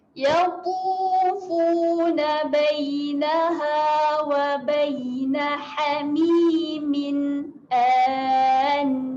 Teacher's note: Dia bunyi antara huruf A dengan huruf E. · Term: bunyi hamzah